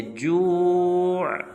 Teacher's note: آخر میں عین ہے، اس عین کو بھی وقف میں ظاہر کریں گے